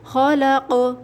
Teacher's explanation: حروف قلقلہ یعنی قوف اب وقف میں ساکن ہوگا، آواز پلٹ کر آئے گی